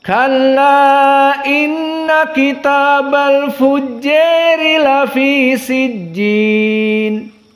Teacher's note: qiraah dari al-Kisai al-imalah al-kubra, lebih mendekati kepada kasrah